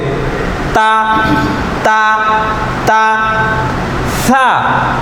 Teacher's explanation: এখানে ত একটা বর্ণ থাকার কারণে এই তা টান হবে না তাড়াতাড়ি পড়তে হবে তা ছা এখানে একটা বর্ণ থাকার কারণে এরা তাড়াতাড়ি পড়তে হবে